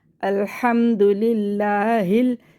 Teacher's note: یہ لفظ اللہ کے لام کو باریک پڑھیں گے کیونکہ لفظ اللہ کے لام سے پہلے زیر ہے ، اور ہا کو سینے سے نکال کر پڑھیں گے، اور